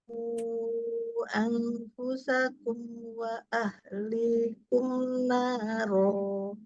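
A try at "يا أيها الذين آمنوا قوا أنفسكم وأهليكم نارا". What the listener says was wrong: Ya ayyuh ya ada tasdid. Ayyuhalladzina amanu. Huruf qofnya mau lebih ee bulat lagi ya.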